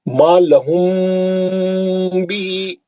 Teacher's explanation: میم ساکن کا اخفاء شفی حرف با غنہ ہوں گا یہاں پہ لمبا کرنا ہے